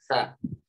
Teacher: sa gendar ya huruf Sae dan gagal itu sama Maksudnya ya ujung lidahnya bertemu ujung gigi seri atas